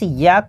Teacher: य का उच्चारण तालव्य से होता है।